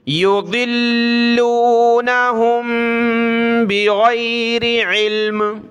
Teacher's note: ہا کو میم کے ساتھ ملائیں گے، ناک میں آواز پیدا ہوگی